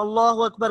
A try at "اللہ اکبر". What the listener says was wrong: ہاں یہ لفظ اللہ کو موٹا پڑھنا. اللہ اکبر.